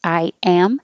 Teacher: I, your tongue finishes in a very high position. Am, your tongue is very low, but instead of taking a break, I am, just keep your tongue sliding and it will make an invisible Y.